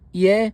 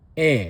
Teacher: Some people may say it's not ye like Vietnam, it's e.